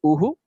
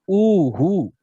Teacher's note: अ के बाद अगर विसर्ग है तो उसको बोलेंगे अह, आ के बाद है तो आहा। जिस मात्रा के बाद है उतना ही खींचना पड़ता है विसर्ग को।